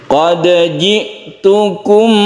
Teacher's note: Idgham baik itu idgham mutajanisan atau mutamathilan, ini bukan. Jadi tetap qalqalah, jangan diidghamkan atau dimasukkan ke huruf jim. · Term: qalqalah sughra